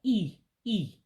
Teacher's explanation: the i with the dot underneath it makes an e sound like a real sharp high e